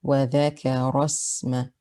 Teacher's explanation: we don't mention the hamzat wasl here. We go straight from the ra with fatha to the sin with sukoon.